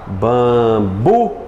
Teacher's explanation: Qual é a mais forte? Né, o bu. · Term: sílaba tônica